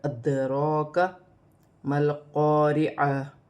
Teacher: دال ساکن ہے، دال میں ادا کرتے وقت تھوڑا سا قلقلہ پیدا ہوگا، دال کو حمزہ کے ساتھ ملا کر ادراک ما القارعہ۔